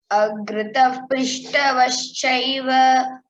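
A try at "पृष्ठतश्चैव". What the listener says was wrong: Prishtataschaiva. Ta you tell properly. So agrata prishtataschaiva prishtataschaiva tascha. It should come like that.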